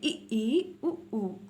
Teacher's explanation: आपके जो होंठ हैं वो आगे से खुल रहे होंगे और पूरे पीछे से बंद होकर दोनों साइड से चिपक रहे होंगे। आगे की तरफ आपका थोड़े से होंठ खुल रहे होंगे और आपका मुंह लगभग पूरा बंद होगा। · एंड आपका है समृत स्वर। तो समृत स्वर है आपके मुख द्वार लगभग बंद। कैसा? लगभग बंद, पूरी तरीके से नहीं बंद होगा, लगभग बंद।